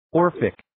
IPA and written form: 'ɔːrfɪk (Orphic)